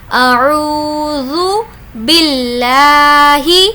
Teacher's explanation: واو مدہ کا قاعدہ ہو رہا ہے، اس لیے ہم یہاں پر کھینچ کر پڑھیں گے۔